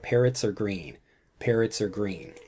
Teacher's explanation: a sentence where we've got the S from parrots combining with the R or the a sound from R